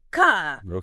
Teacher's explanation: in British English if an R isn't followed by a vowel it's usually silent so words like car would sound more like car and better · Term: non rotic R